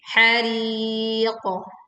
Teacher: Hariqah. Hari tipis, tapi qaf kita memantul dengan suara yang tebal. Dan sebelumnya kita panjangkan 2, 4, atau 6 harokat.